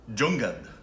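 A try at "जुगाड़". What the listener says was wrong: There's no N. Come on, now you're reverting back to five weeks ago. Jugad.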